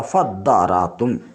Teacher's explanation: تا کو دال سے بدل کر دال کا دال میں ادغام کر دیا گیا